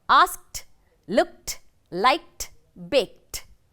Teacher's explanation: The ed is pronounced as t.